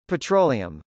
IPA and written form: pətrˈoʊliəm (petroleum)